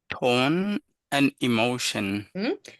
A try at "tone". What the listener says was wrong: Try to round the tone a bit more, so it's tone. Yes, way better. Yes, way better.